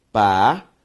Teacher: a sílaba tônica de parede é o re. Uma palavra paroxítona.